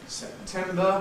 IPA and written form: sepˈtembə (September)